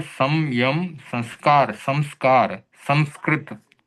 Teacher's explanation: य र ल व श स और ह इसके पहले आने वाले अनुस्वार का उच्चारण हम म की तरह कर सकते हैं